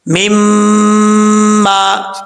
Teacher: میم کے اوپر شد ہے، غنہ کریں گے ایک الف کی مقدار، اور لمبا بھی کریں گے کیونکہ آگے الف آ رہا ہے